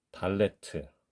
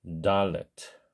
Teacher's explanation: 본래 발음이 유성음이기 때문에 영문자 D에 더 가깝다고 생각하시는 것이 좋겠습니다